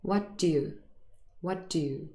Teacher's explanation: it's an incredibly short little d sound